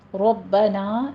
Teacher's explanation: ربنا میں را مفخم ہے، باقی پر تشدید ادا کیجئے